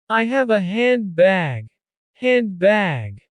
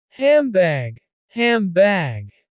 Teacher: But usually in quick speech, handbag becomes hambag, hambag. The D is omitted and the N modifies to a lip-together sound, M, to make it easier. To get to the B, which is also a sound made with lips together. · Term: assimilation